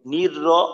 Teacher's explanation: নির র বললে র একেবারে পাতলা হয়ে গেল